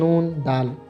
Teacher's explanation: जबान की नोक जमा ऊपरी दांत बराबर दंती